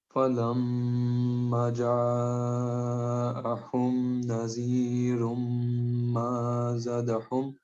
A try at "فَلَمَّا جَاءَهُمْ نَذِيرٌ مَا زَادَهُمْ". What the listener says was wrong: آپ نا حرف مدہ چھوڑ رہے ہیں، ما کا بھی چھوڑ گئے ہیں اور زا کا بھی چھوڑ گئے ہیں، ٹھیک ہے. فَلَمَّا جَاءَهُمْ نَذِيرٌ مَا زَادَهُمْ